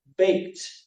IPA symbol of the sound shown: t